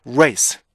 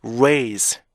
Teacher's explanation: 뒤에 오는 S 발음하고 Z 발음의 길이에 따라서 앞에 있는 모음이 같이 동화가 돼서 같이 길어지고 짧아지는 현상이에요.